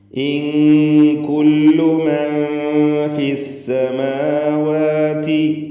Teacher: സാക്കിനത്ത നൂൻ ശേഷം ഫാ ഇഖ്ഫാ ഹഖീഖി അവ്യക്തമാക്കി മണിക്കുക.